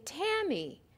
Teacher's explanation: or in a higher tone for example when i say tammy the first syllable tam is accented in an accented syllable your mouth also opens wider